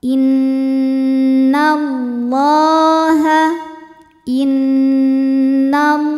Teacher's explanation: Lam jalalah dibaca secara tafkhim sebab huruf sebelumnya yaitu nun berharokat di atas yaitu harokat fathah. Maka lamnya dibunyikan dengan tebal.